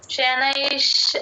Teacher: షనైష నై తర్వాత తర్వాత ష తీసుకోండి ష కి పొల్లు పెట్టండి అప్పుడు ష కింద ష వత్తు క్లియర్ గా వినిపిస్తుంది. షనైష్ అని ఒక్క సెకండ్ ఆపితే ష కింద ష క్లియర్ గా వినిపిస్తుంది.